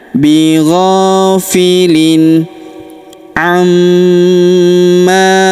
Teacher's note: Huruf gho kita panjangkan dua harakat karena terdapat alif di depannya.